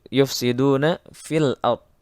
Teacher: fi asalnya panjang tapi karena di depannya ada alif lam qamariyah maka bunyi fi tidak dipanjangkan melainkan langsung dimasukkan kepada lam